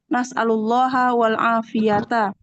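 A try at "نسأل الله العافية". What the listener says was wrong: Bukan nasallallahu afiyah, nasallallahu afiyah nggak ada wawunya.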